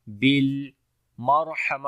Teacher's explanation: آگے ہے بالمرحمہ، بالمرحمہ، با کو لام کے ساتھ ملائیں گے، لام کے اوپر توسط آئے گا، یعنی توسط کی کوالٹی ہوگی، آواز ہلکی سی جاری ہوگی ، بالمرحمہ، را کو موٹا پڑھیں گے، اس کے اوپر جزم